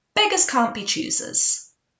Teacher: when we put it together, the T at the end of the can't often gets dropped. Let's do it from the end.